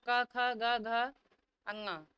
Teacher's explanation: तो क वर्ग का जो उच्चारण स्थान है वह आपका कंठ है क्योंकि इसका सूत्र होता है अतु विसर्जनीय नाम कंठ है ये आपके जो वर्ण है इन सबका उच्चारण कंठ से होता है।